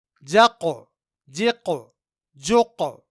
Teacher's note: یہاں ان تینوں جگہوں میں ہم نے حرف قاف میں قلقلہ کیا کیونکہ قاف حروف قلقلہ میں سے ہے اور یہاں قاف ساکن ہے۔ نوٹ کیجئے کہ سب سے زیادہ قلقلہ کی آواز حرف قاف میں پیدا ہوتی ہے۔